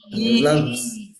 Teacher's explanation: la I es un sonido anterior porque la lengua se va hacia adelante.